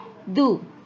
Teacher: [Musik] kanidu Kanu ya harus ditahan yang lama ditahannya dua harakat ditahan selama dua harakat atau dua ayunan